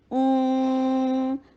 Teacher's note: حمزہ کے لیے ضمہ، ہونٹوں کو گول کیا جائے گا اور نون کے اوپر ساکن ہے تو واپس ہونٹوں کو لایا جائے گا